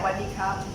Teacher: The first syllable is dropped sometimes